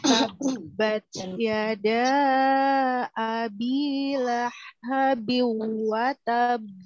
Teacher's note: ada ba yang bertasdid yang dikol-kolakan dengan cara menjeda sedikit ya